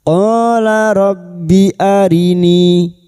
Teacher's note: Pada saat dibaca wakaf di sini, maka kita panjangkan dua harakat dulu dan nanti jika dibaca wasal baru kita panjangkan empat atau lima harakat. Qabbi arini [Musik] walam mim yang bertasdid gunah musyaddadah kita dengungkan selama tiga harakat. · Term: mad jaiz munfasil